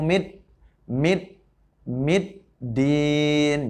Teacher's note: Idgham Syamsiah jadi harus ditekan ditasydidkan atau dimasukkan